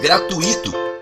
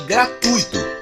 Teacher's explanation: É muito comum ouvirmos gratuito com o acento tônico no i, em vez de gratuito com acento tônico no u, como orientam as normas urbanas de prestígio.